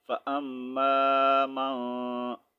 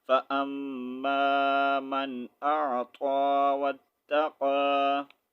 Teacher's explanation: اب ہم یہاں پر غنہ نہیں کریں گے کیونکہ حمزہ ہے. ٹھیک ہے، اس کو ظاہر کر کے پڑھیں گے